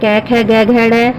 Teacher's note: इसका उच्चारण स्थान है कंठ और वर्ण का नाम है कंठ्य